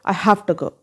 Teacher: तो ये हैव जो है वो वी व साउंड पे फिनिश होता है. तो जब नेटिव स्पीकर फास्टली बोलते हैं तो ये वी जो है उसको एफ में कन्वर्ट कर देते हैं, तो बोलेंगे आई हैव टू गो, और टू की जगह ट, आई हैव टू गो।